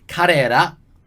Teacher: the ra is sort of like a bit between la and ra. You kind of like have to find a mid space between the two.